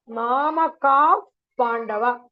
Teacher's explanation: So the Visargam has become F here.